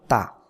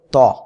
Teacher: তা সিম্পল পাতলা আওয়াজে হবে তা জবর তা আর ত টা মোটা আওয়াজে হবে